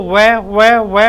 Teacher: वकार से उच्चारण स्थानम है ना, दंतोष्टम। वैकार का उच्चारण स्थान दंतोष्टम है